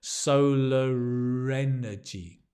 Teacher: we pronounce the r it's linked